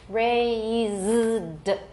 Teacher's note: raised, voiced with a longer vowel